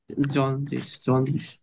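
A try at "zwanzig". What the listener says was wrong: এটা কি সেড এর উচ্চারণ আমরা এস এর মতো করব, তাহলে আপনার জন্য সহজ হয়ে যাবে। জেড এর উচ্চারণ ইংরেজি জেড বলি আমরা, এটা জার্মানের উচ্চারণ হবে সেড।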